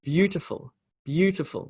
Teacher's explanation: beautiful beautiful with beau having the emphasis to full to full to full having much smaller emphasis amazing